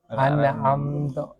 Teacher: membaca nun secara memantul ketika mati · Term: qalqalah